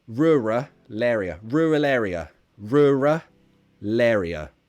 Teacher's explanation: We would link the L to the next word, actually.